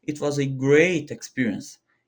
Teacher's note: Por exemplo, em uma frase como: "It was a great experience", fale mais ou menos assim: "It was a great experience". enfatiza o great, porque ela é uma palavra muito importante da frase que vai situar todo o contexto